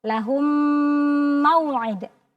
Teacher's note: Jadi ketika mim sukun bertemu dengan huruf mim, maka cara membacanya kita idghamkan. Kita leburkan disertai dengan dengung. Dengung. Lamakan.